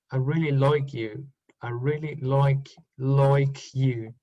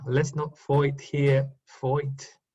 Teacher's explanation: Diphthong I, like in like and fight and my, they change OI.